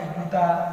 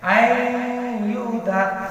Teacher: نون ساکن کو نہیں پڑھیں گے آپ ضرور، پر آپ کو نون ساکن کی آواز ناک میں لانی ہے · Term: بالغنہ